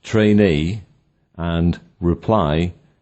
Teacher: On the other hand, words such as trainee and reply have stress on the second syllable, while the first is unstressed